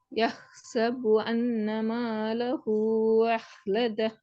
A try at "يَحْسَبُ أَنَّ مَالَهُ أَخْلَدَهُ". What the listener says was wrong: உங்களுக்கு அலிப்ல உச்சரிப்பு வரணும், வராட்டி பிள்ளை. நீங்க ஓதுறீங்க யஹ்சபுன்னு வந்து கடைசி. அது இல்லாம தான் வருது.